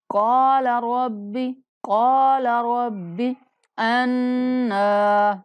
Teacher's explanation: نون پر غنہ کرتے ہوئے ایک الف کے برابر لمبا کرنا ہے